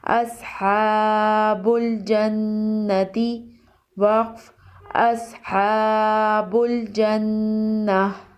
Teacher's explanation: حمزہ صاد زبر اس، ہا کھڑا زبر ہا، اصحا، با لام پیش بل، اصحاب، جیم نون زبر جن، اصحاب الجن، نون زبر نا، اصحاب الجنہ، تا زیر تی، اصحاب الجنۃ، وقف اصحاب الجنہ۔ نون مشدد ہے، یہاں غنہ ہوگا